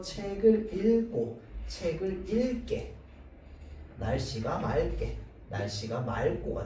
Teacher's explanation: 그 다음에 어떤 글자가 오는데 초성에 기억이 있어. 그래서 리을 기억이 기억을 만나게 되면 어떻게 발음하느냐? 리을로 발음되게 됩니다.